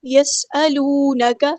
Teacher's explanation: سین کی سٹی ہم واضح کریں گے